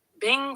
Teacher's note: Let's break it down. Bing, fourth tone, sharp and falling